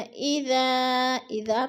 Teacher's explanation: اذا کو تھوڑا سا لمبا کرنا ہے کیونکہ ادھر الف مدہ ہے، الف خالی سے پہلے ذال کے اوپر زبر ہے تو الف مدہ۔